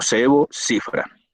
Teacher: fricativa interdental, sordo, ante las vocales como EI